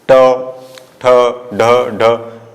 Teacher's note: ट जैसे ही बोला ट, ठ, तो आपकी जो जिह्वा है ऊपर के मुख के ऊपर के हिस्से को टच करेगी। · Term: मूर्धा